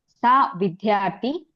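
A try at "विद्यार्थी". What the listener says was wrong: మహోదయ సా విద్యార్థి దీర్ఘం అస్తి. అదే స్త్రీలింగం మనము డిఫరెన్స్ భేదం చూపించాలి కాబట్టి విద్యార్థి అలా అంటే బాగుంటుంది, స్పష్టత.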